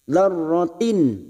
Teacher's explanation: Kasrah tanwin kita baca jelas karena bertemu kha, maka bunyinya dzarratin. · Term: idhar halki